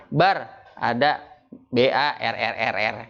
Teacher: di dalam huruf ro itu takrir. Jadi itu huruf yang berulang. Pengucapannya berulang.